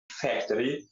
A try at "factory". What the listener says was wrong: So he got issues with the word factory. He is stressing more on that R.